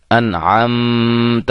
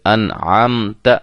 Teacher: اظہار، یعنی کہ ظاہر کر کے پڑھیں گے، غنہ نہیں کریں گے. انعمت نہیں پڑھیں گے، انعمت، اظہار ہوگا.